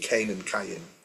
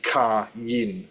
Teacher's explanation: in English you combine the two letters, the two vowels in the middle, like a diphthong. But in Hebrew, you say ka yin, so we separate those two vowels.